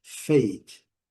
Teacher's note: O A com seu som bem longo, o E não pronunciado.